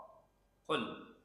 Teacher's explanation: Tempat keluarnya di pangkal lidah. Bertemu dengan langit-langit atas yang lunak bagian dalam. Itu qaf, tempatnya, tempat keluarnya qa. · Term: huruf qaf